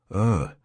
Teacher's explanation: it's just neutral nothing happens with the mouth nothing happens with the tongue